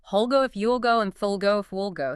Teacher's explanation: See how the vowels shorten and blend into that dark L sound?